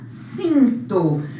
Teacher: Para nasalizar o I, para não ser cito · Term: vogal I nasal